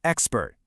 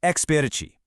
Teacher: But, in Portuguese, particularly in Brazilian Portuguese, words rarely end in a hard, silent consonant. So, a vowel sound naturally gets added to the very end. It becomes expertici. · In English, we end the word with a hard, abrupt T sound, expert.